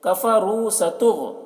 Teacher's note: غین کو پور پڑھیں گے، غین حرف مستعلیہ میں سے ہے اور غین کو ادا کرتے وقت خیال رکھنا ہے کہ قلقلہ نہ ہونے پائے